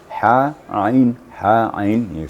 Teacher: ainnya itu di tengah tengah tenggorokkan berdekatan dengan ha